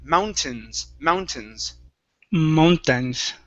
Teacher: right here this word is mountains so the a i n instead of mountains with a long e long a it's a short I